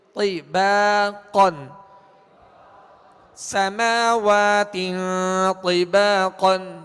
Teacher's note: سماوات طباقا طباقا طباقا تو کے نیچے زیر ہے لہذا تو کو پر پڑھیں گے اور آواز کو گھرا کر، تے با نہیں پڑھیں گے بلکہ تی، تو کو پر بھی پڑھیں گے اور ہونٹوں کو گول کیے بغیر اسے پر کرنا ہے